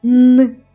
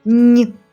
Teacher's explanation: звук н приголосний він може бути твердим н у звуковій схемі позначимо його одні рисочкою або м'яким нь у схемі позначимо його двома рисочками на письмі звуки н нь